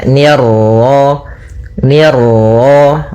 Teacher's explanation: Ni tipis ketemu ro yang ro tafkhim. Ro tebal